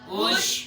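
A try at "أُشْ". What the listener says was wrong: شین پہ اوش, یہ شین پہ کلکلا ہوتا ہے, نہیں کرنا چاہیے. یہ کلکلے والی آواز ہے کہ ہیلے جنبش ہو. اوش یہ غلط ہے. اوش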